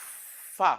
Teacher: is a fricative sound because the air is not totally blocked. So it's fricative.